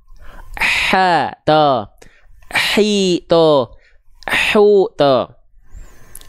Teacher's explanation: telinga kita akan mendeteksi ada suara yang ikut mengalir bukan cuman bukan cuma nafas yang mengalir tapi dia mengalir juga suaranya terdengar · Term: mengalir nafas